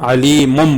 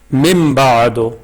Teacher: نون تنوین کو ہم میم کے ساتھ بدل دیں گے ، علیمم پڑھیں گے، علیمن نہیں پڑھنا ہے ہم نے، علیمم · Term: اقلاب